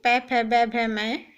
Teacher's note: ये ओष्ठ्य वर्ण है, इनका उच्चारण होठों से किया जाता है